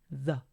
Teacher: Como pueden ver, esa TH se produce el sonido no solamente colocando la punta de la lengua entre los dientes y soplando aire, sino que tenemos que realizar un sonido, ruido con nuestras cuerdas vocales. Y ahí también tenemos al sonido de la schwa, a, y la unión de estos, th, a, suena como the.